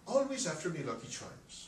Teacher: it's mostly the way I go up and down the scale when I talk like an Irish person